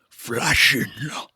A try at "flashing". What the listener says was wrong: I say more like flashing like more stretching out the vowel a little bit.